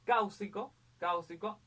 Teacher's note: la mayor fuerza de voz está en caus, entonces es una esdrújula, las esdrújulas, todas las esdrújulas llevan tilde, esdrújula, correcto.